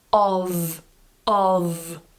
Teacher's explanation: the strong form of this word is pronounced with a voiced sound at the end